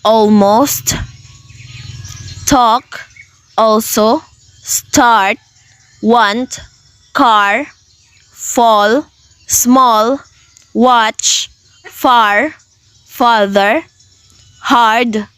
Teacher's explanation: This vowel is the center of the mouth, not front, not back, and it is low down. So, the mouth needs to be open enough and the tongue is relaxed.